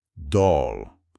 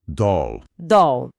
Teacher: Olha, é um som que pode variar um pouco lá nos Estados Unidos, mas geralmente é um O mais aberto